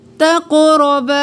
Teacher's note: تق اور را दोनों मोटे कौफ और रॉ, और बा को एक अलिफ के बराबर खींचेंगे, अलिफ मद्दा है।